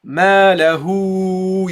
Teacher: the air flows out of my throat immediately to my mouth and flows out, not through the nasal area.